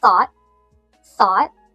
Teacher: We have the unvoiced th at the beginning, which you can think of as blowing air between your teeth with your tongue.